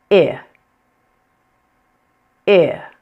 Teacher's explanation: Your tongue should be pressed against your lower teeth, like this, but your mouth will be more closed. Your lips will be relaxed. They are not rounded and you are not smiling. You want to have very little tension and very little effort. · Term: short I